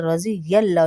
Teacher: یل لام کو پر کر کے پڑھیں گے، موٹا پڑھیں گے